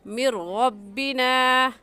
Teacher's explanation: را کے اوپر زبر ہے تو را کو اوپر یعنی موٹا کر کے پڑھیں گے، ایسے کہیں گے مر ربنا یومن۔